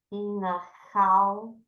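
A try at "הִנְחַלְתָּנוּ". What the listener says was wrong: 4 syllables. The first 2 letters are together.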